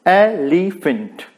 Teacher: सो डेक्टिलिक metre में there are 3 syllables, first stressed and last 2 unstressed